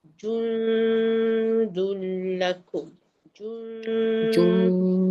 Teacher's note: >> Jadi sebab dia baris dhammah ke depan atas jim tu >> kita akan muncung mulut masa sebut jim saja. Tapi masa dengung tu kita kembali kepada tempat biasalah. Ah sebab dia tanda sukun.